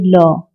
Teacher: next है 5वां पार्श्विक व्यंजन, जिन व्यंजनों का उच्चारण करते समय जिह्वा का अगला भाग मसूड़ों को स्पर्श करती है और हवा पार्श्व के आसपास से निकलती है